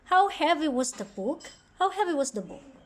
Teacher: the pattern is normal at first it will rise up and then fall down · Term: wh questions, WH questions